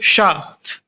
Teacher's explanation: मूर्धा पे रख के बोलेंगे शा, तो ये मूर्धन्य शा हो गया